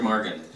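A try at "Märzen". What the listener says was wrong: Actually, that's a Z, isn't it? Marzen.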